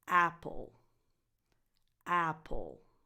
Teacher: the stress is on the first vowel and it has the same sound that it has in words like cat and bad